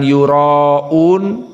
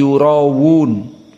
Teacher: Maka di sini karena ra makhraj lisan bertemu dengan hamzah yang tudib, sangat dalam makhrajnya dari aqsal halq, maka hamzah pada yura diganti menjadi waw, bukan yuraun tapi yurawun